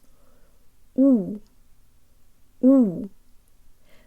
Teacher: a real Russian U with good default mouth position and lips really far out. lips.